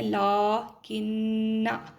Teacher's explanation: نون کو ادا کرتے ہوئے ہم نے غنہ کرنا ہے، آواز کو ناک میں تھوڑی دیر ٹھہرانا ہے